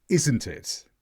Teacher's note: Isn't being more stressed meant I was expecting agreement.